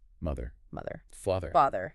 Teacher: Yes, a buzz. It is not a hard D sound. It is not mutter or fodder. It is a continuous flow of air. · place your tongue just under your top front teeth, and let the air buzz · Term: th sound